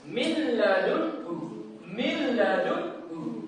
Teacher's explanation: Jadi contohnya itu langsung masuk ke huruf setelahnya. Jadi nun sukunnya itu tidak perlu diucapkan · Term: idgham bila gunah